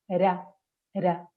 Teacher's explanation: Es decir, la lengua va al mismo lugar, igual exacta, pero para hacer la R simple solo toca una vez. Hace así, era, era.